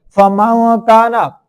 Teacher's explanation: For example, fama kana, you can see here after noon sakin had an ikhfa letter like kaf. It's mean we hide the sound partially in nose